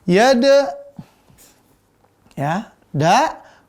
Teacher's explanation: Da ini dia tipis. Lalu napasnya tertahan. Lalu setelah itu dia memantul.